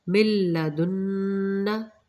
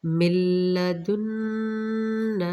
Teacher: میم کو لام سے ملائیں گے، نون یہاں پہ نہیں پڑھا جائے گا، میم کو ڈائریکٹ ہم نے لام سے ملانا ہے۔